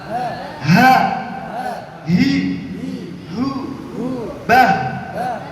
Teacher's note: Ha ini atau huruf halqi atau huruf tenggorokan atau pangkal tenggorokan ya. Makhrajnya di tenggorokan.